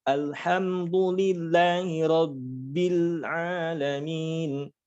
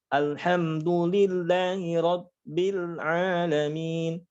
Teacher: ba-nya diberikan sifat syiddah. Nah, sehingga suaranya tidak mengalir.